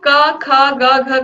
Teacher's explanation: तो क, ख, ग, घ का उच्चारण स्थान कंठ होगा।